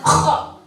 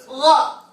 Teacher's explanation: Kha pada tenggorokan paling luar nih. Paling ujung ini.